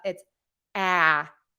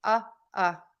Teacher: that ah sound is that very wide open circle mouth sound in American English your tongue tip is low the back is pulled up